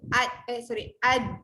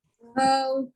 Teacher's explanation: Hujung lidah pergi gusi atas. Ta, dal dengan to. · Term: huruf dal